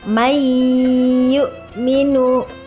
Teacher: nun mati di baca dengan mendengung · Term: Idgham Bighunnah